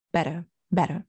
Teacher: He doesn't say better with an R on the end. So this is another regional pronunciation he has.